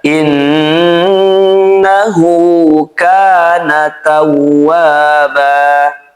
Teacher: Hu di sini dibaca dua harakat karena sebelum dan setelahnya bukan bertanda sukun dan juga setelahnya bukan hamzah atau disebut juga mad silah sugra ya.